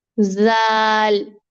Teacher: زول نہیں ہوتا، زال. زال، زال نرم بھی ہے اور باریک بھی ہے